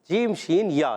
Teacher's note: جیم ادا ہوتا ہے زبان کے درمیان اور اوپر کے تالو کے درمیان سے